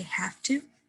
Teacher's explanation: The V turns into more of a F sound.